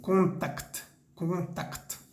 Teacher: pronunciamos bien la C y la T al final, como excepción en el francés